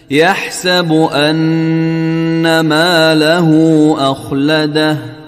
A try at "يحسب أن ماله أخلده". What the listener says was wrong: أخلده غلط، أخلده بدون قلقلة في الخاء.